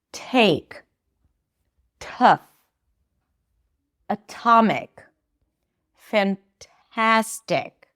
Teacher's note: when they're at the beginning of words and at the beginning of stressed syllables then they're aspirated. There's this little h.